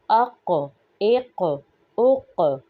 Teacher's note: قاف حروف مستعلیہ میں سے ہے، اور قاف پر ہم قلقلہ بھی کریں گے